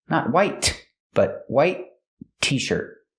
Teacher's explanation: The T in white is a stop T.